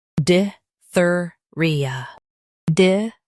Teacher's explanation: Stress thir in both. Soft ia. Diphtheria.